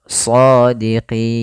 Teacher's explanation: Kemudian sebelum huruf nun ada huruf ya. Nah, maka pada lafal qi itu kita boleh memanjangkan 2 harokat atau 4 harokat atau 6 harokat. Shadiqin 2 harokat, shadiqin. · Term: mad arid disukun